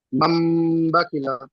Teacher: নুন সাকিনের পরে বা এসেছে, তাই নুন সাকিনকে মিমের দ্বারা পরিবর্তন করে এক আলিফ গুণা করে পড়তে হবে।